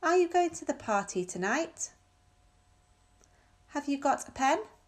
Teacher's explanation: Notice how the intonation rises in the end of this question, because it's a yes-no question. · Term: rising intonation